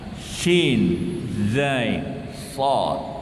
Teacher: Shad dengan sin itu sama-sama letaknya adalah ujung lidah dengan papan urat gigi bahagian atas.